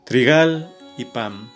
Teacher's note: trigal y pam son palabras agudas la última sílaba es la que tiene el acento tónico